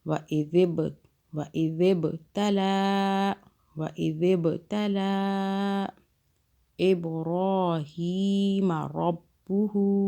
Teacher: ذال کو سافٹ پڑھنا ہے، زبان کو ہلکا سا باہر کیجیے، اور اس کے آگے جو با آ رہا ہے اس پہ قلقلہ کریں، یعنی جھٹکے سے پڑھیں.